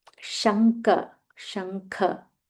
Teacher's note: Half ing followed by full Mahaprana Kha.